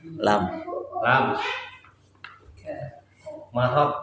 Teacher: Makhrajnya lam ujung lidah sampai sisi lidah menempel pada gusi bagian atas.